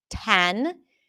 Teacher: In some dialects, you will hear a pure A sound